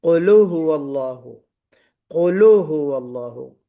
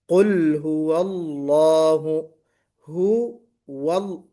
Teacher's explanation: لام پر قلقلہ نہیں ہونا چاہیے، بلکہ قل ہو اللہ، ہو وال، واو منہ گول ہونا چاہیے۔